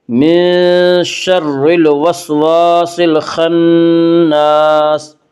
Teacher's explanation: الف مدہ، الف ہمیشہ مدہ ہوتا ہے، الف سے پہلے ہمیشہ زبر ہوتا ہے، الف مدہ کو ایک الف کے برابر کھینچ کر پڑھیں گے